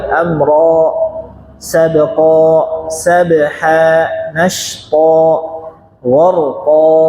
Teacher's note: Jadi jangan ada hamzah di akhir.